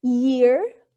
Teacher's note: Notice that ya in year, the tongue is raised to the hard palate, but not too close, and it is palatal. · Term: glide